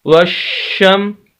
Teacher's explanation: شین کو سخت کر کے آواز کو روک کر